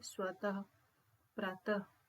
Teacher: जब विसर्ग का चिन्ह लगता है वहां ह लगा के हम पढ़ते हैं।